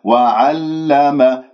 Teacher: اللام المشددة تذكر بأنها بينية، ولا أطيل زمنها حتى لا أصير رخوة